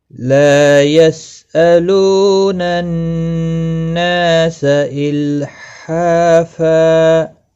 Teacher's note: لا الف مدہ ہے، یسألون لو واو مدہ ہے، نا الف مدہ ہے، تینوں کو ایک ایک الف کے برابر کھینچ کر پڑھیں گے ، نون مشدد پر گنہ ہوگا، گنہ کے ساتھ پڑھنا ہے